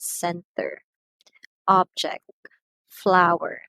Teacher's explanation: for these two syllable nouns the stress syllable is on the first